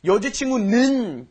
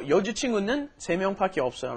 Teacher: You kind of stressed a little bit too much on the 는.